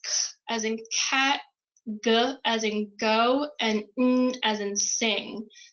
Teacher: you can feel that the back of your tongue like lifts up and almost hits the beginning of like your throat